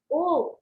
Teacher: ओ बोलते समय गले पे जोर पड़ता है और होठ गोल होते हैं, तो ये कंठ और ओष्ठ्य साउंड है, मिक्स साउंड है।